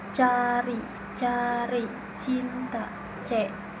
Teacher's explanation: Yang ketujuh ada C, bentuk bibirnya ujung lidah menyentuh alveolar ridge, udara dilepaskan melalui celah kecil